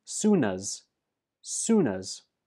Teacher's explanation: soon is stressed and as is pronounced us the last sound in soon is the n and that links to us to become sunnas